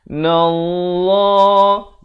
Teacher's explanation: Wa wajibul gunnah sekali lagi, dengungkan 2 harakat di sini. Nallah, lafz jalalah dibacakan dengan tebal 2 harakat